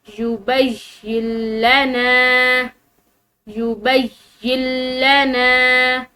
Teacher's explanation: इस नून साकिन को जो है वो हमने बिल्कुल खामोश कर देना है। इस नून साकिन को नहीं पढ़ा जाएगा।